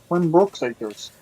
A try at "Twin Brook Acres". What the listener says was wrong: Brook, not Brooks. I know you're from Newfoundland and stuff, but an S makes a big difference.